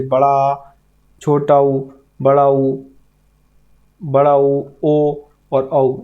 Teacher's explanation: जिन ध्वनियों के उच्चारण में जीभ का हमारा पिछला भाग मदद करता है, उन्हें पश्च स्वर कहते हैं